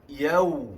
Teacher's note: pada huruf waw yang mati itu ada sifat rakhawah, suara yang mengalir. Jadi sebutannya agak bertempoh.